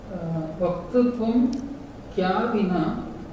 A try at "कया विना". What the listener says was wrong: Kaya vina na shobhati. Vaktritvam kaya vina na shobhati. When you said kya, it sounded like Hindi word. Kya with halanta. Kaya with halanta becomes kya. Kaya in Sanskrit, if you put a halanta, it becomes kya. Vaktritvam kaya vina na shobhati.